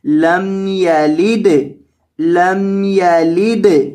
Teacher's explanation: میم ساکن کے بعد یا ہے، یہاں گنہ نہیں ہوگا. اس وجہ سے آپ نے یہاں گنہ نہیں کرنا، اس کی آواز کو ناک میں نہیں پڑھنا، اس کو سمپل پڑھنا ہے لم یلد، لم یلد.